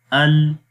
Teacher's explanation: लाम हर्फ के अंदर जो पहली सिफ्त है वो सिफ्त जहर है, यानी कि इस हर्फ को जब पढ़ेंगे तो सांस रुक जाता है। तो इसकी मिसाल है हमज़ा लाम ज़बर अल। · ना तो आवाज़ पूरी तौर पर मखरज में बंद होती है और ना ही आवाज़ पूरी तौर पर मखरज में जारी होती है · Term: तवस्सुत